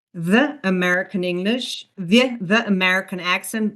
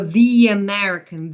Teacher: And vowel to vowel linking is actually, for example, the American accent. When a word ends in a E, we use a Y sound, a quick Y sound, to link it to the next word.